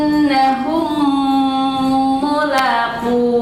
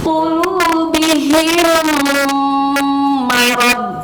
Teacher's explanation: Idgham itu apa? Dimasukkan bunyi mim ke mim berikutnya, tapi harus disertai dengan gunnah. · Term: idgham shaghir